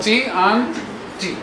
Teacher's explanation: The tip of the tongue is connected firmly with the alveolar.